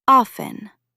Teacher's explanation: Both pronunciations, with or without the T sound, are actually acceptable, but the more common one drops the T.